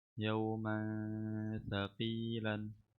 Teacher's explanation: ميم تنوين بالفتح مخفى عند ثاء المفتوحة بغن حركتين